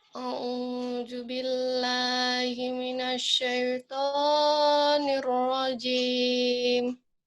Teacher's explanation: Shin-nya udah bagus, cuman kurang lama, kurang tafasyih. Terus to-nya sama tobi-nya cuma 2 harokat.